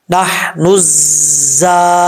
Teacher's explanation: یہ زا سیٹی والا زا ہے، ذال نہیں ہے جس میں سیٹی، جیسے یہ ذال ہے بغیر سیٹی کے پڑھا جاتا ہے. یہ جو را کی شکل میں زا ہے اس میں سیٹی ہوتی ہے · نون کے بعد زا آ رہا ہے، نون کو الف اور لام جو ہے بیچ میں گر جائے گا، نون کو ڈائریکٹ زا سے ملائیں گے. یہ زا سیٹی والا زا ہے، ذال نہیں ہے جس میں سیٹی، جیسے یہ ذال ہے بغیر سیٹی کے پڑھا جاتا ہے.